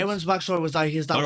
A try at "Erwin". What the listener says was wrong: Erwin. Sounds like you're saying Aaron. Erwin.